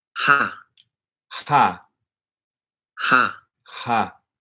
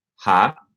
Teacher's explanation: it sounds to me like he's not actually pronouncing an H sound like we have in English